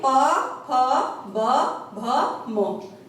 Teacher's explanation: दोनों होठ आपस में मिल रहे हैं तो इसलिए इनको बोला जाता है ओष्ठ्य